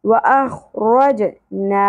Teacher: جیم ساکن پہ قلقلہ ہوگا واخرجنا زبر کے ساتھ الف حرف مدہ ایک الف کے برابر